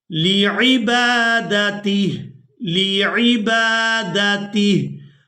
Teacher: अब यहाँ पर भी आप लोग अलामत वक़फ़ देख रहे हैं तो वक़फ़ की सूरत में हा को साकिन कर देंगे, ता को हा साकिन के साथ मिलाकर अदा करेंगे।